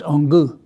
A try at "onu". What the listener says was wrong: You need to draw it out a little bit.